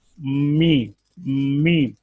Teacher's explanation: दोनों होंठों को खुश्की वाला हिस्सा मिलाएं जो नजर आता है, मीम, इससे मीम निकलता है।